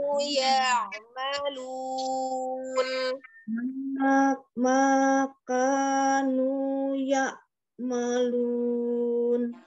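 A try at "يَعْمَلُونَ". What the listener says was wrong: Hamzah sukun ya. Ya, dilatih ain sukunnya mengalir ya. dengan tidak ditekan, dia mengalir kan ainnya dari tenggorokan bagian tengah ya. Hamzah itu kan dari tenggorokan bagian bawah. Bedakan kalau hamzah ya.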